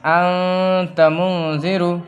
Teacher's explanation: یہاں پہ ہم نون کی آواز کو ظاہر نہیں کریں گے بلکہ ناک میں لے جا کے چھپائیں گے، یعنی نون کی آواز کو ناک میں چھپا کر اس کو گنگنا کے پڑھیں گے، جیسا کہ انت منذر، ٹھیک ہے؟ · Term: اخفا